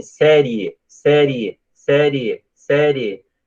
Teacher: Então, o I quase não aparece. O I é semivogal.